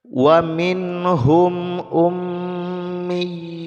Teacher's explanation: Kemudian mim yang bertasydid dibaca gunnah ya, jadi didengungkan kadar 2 harokat. Mim dan nun ya yang bertasydid, dua huruf ini ketika bertasydid dia didengungkan.